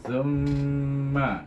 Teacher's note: wajibul guna pada mim yang bertasyd